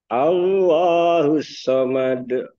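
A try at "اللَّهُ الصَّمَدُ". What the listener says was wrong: jangan sampai ditahan, Pak. Allahus samad. Jangan ditahan, tapi Allahus samad. Made langsung. Made. Kita bahas sedikit saya bahas seperti kita mengucapkan made gitu ya. Made, madein, madein Indonesia itu ya. Nah itu jadi ringan.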